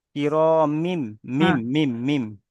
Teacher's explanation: তানবিনের পরে বা এসেছে তাই তানবিনকে মিমের দ্বারা পরিবর্তন করেছে